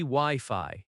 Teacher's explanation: Wi-Fi has stress on both syllables, w i f i.